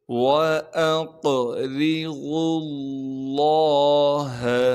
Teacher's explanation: تو ذات کو ہم نے لفظ اللہ کے لام سے ملانا ہے۔ لفظ اللہ کے لام سے پہلے ذات پر پیش ہونے کی وجہ سے لفظ اللہ کے لام کو ہم موٹا کر کے پڑھیں گے۔